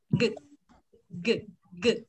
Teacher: cuống lưỡi cuống họng nó chạm với nhau đấy, lúc đấy nó đang chạm với nhau nên cảm giác nó vướng.